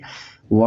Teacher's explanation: देखिए यहाँ पर दो उच्चारण स्थान से इसको बोला जाता है, एक है हमारा दंत और दूसरा है ओष्ठ। दंत और ओष्ठ ऐसा लगता है कि प्राणवायु दोनों इंद्रियों को टच करता है, स्पर्श करता है, तब जाकर इसका उच्चारण स्थान होता है, तो इसीलिए व का उच्चारण स्थान हमारा होगा दंतोष्ठ।